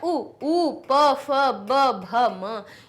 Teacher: ओष्ठ से कौन से निकलते हैं, हमारा उ, प, फ, ब, भ, म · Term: ओष्ठ्य